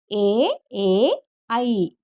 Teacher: కంఠ తాళవ్యాలు కంఠము మరియు దవడల నుండి పుట్టినవి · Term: కంఠ తాలవ్యాలు